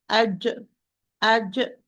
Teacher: the Jim from the middle of the tongue with the middle of the upper palate with complete contact